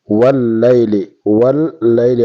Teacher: واللیل لام مشدد ہے دو مرتبہ پڑھا جاتا ہے واللیل واللیل اور لام کو باریک پڑھیں گے یا ساکن اور